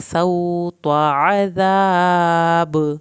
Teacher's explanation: अज़ाब अलिफ को लंबा करना है, आखिर में बा का कलकला होगा